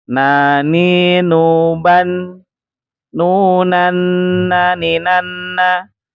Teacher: Ee pertamanya ujung lidah menyentuh gusi atas